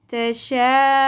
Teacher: तशा, हमज़ा वाव पेश ऊ, वाव हरफ मद्दा, हमज़ा पेश ऊ का साउंड हमने वाव हरफ मद्दा की वजह से एक अलिफ के बराबर खींचा। ऊ नून ज़बर ना, तशाऊना।